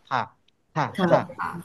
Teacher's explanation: Right right আমরা যেমন ধরেন থুতু থুতু থ থা বলি না, দেখেন জিভটা কোথায় লাগে, থা থা থা, জিভটা দাঁতের মাঝখানে সামনে লাগে।